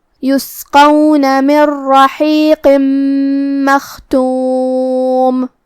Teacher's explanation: قاف کی ادائیگی زبان کے جڑ اور تالو کے نرم حصے سے ہے